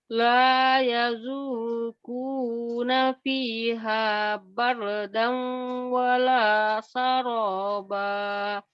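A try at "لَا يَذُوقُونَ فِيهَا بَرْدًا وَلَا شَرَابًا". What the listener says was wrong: Bardau wala syaraba. Ya, kalau putus-putus bardan atau barda. Tapi kalau disambung bardau wala syaroba. La yazuquna fiha bardau wala syaraba. Bardau wala syaraba. Bardau. Wala syaraba.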